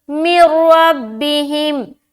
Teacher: ये इदगाम ताम का कायदा है, यानी कि इदगाम तो करेंगे लेकिन गुन्ना नहीं करना।